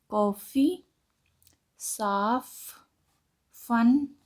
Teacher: बोलते समय ऊपर के दांत नीचे के होंठ को छूते हैं